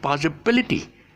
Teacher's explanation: when you have the ity, the stress syllable is shifted to the back.